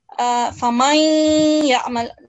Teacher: Gunna sound, a nasal sound again for 2 seconds